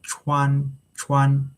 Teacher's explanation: The first tone is like this, flat, okay? Chuan and is a high-pitched tone. So, it sounds like chuan chuan.